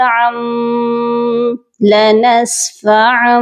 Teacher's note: کیونکہ تنوین کے بعد بن ناصیہ کا با ہے، ہم نے یہ دو زبر کو ڈائریکٹ میم کے ساتھ ملا کر پڑھنا ہے، عین میم دو زبر عم، لنسفعا۔